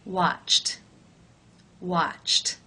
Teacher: The final sound of the verb in infinitive form is ch. That is an unvoiced consonant sound. Therefore, it is case 1, where the ED is pronounced as the T sound.